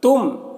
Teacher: میم ساکن کے بعد یہاں پر میم ہے تو میم کو میم سے ملا کر غنہ کے ساتھ پڑھیں گے، اس کو ادغام شفوی کہتے ہیں۔